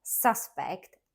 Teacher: as a noun suspect stressed on a first syllable · suspect, stressed on a first syllable, is a person believed to have committed a crime.